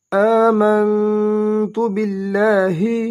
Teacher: حمزہ کھڑا زبر آ دو حرکات لمبا ادا کریں گے